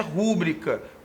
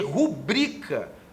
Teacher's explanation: não existe a pronúncia rúbrica como proparoxítona. O que existe é rubrica, numa pronúncia paroxítona.